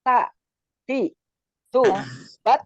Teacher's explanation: Jadi si ujung lidah ya, punggung ujung lidah mengenai pangkal gigi seri pertama yang atas sambil mengenai gusinya. ta ya, ta, tapi nggak usah dikeluarin ta, enggak, tapi si ujungnya aja. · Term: huruf ta